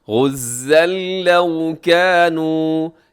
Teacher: الأرض أو كانوا غزا لو كانوا، غزن لکھا ہوا ہے، غزن، یہاں تنوین ہے اور تنوین کے بعد لام ہے تو یہاں ادغام ہوگا ، کون سے والا ادغام ہوگا؟ بغیر غننے کے، غزن لو